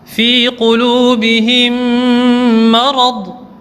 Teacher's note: Maintenant, le idgham et shafawi, lorsque le mim sakin est suivi, alors les 2 lettres seront prononcées comme un seul mim redoublé, c'est-à-dire un mim mushaddad, et en faisant le runna